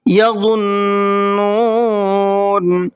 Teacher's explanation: وا کو منہ بھر کے پڑھنا ہے اور نون پر تشدید ہے تو غنہ کرنا ہے